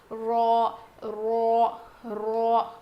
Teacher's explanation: اوپر کے لیفٹ اور رائٹ سائڈ کے داڑوں کو زبان کا جو کنارہ ہے نا، ایڈجس ہے نا، وہ لگے گا